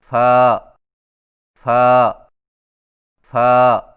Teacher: فا کی ادائیگی میں ثنایا علیہ کے سروں کو نچلے ہونٹ کے گیلے حصے پر لگا کر باریک آواز میں پڑھیں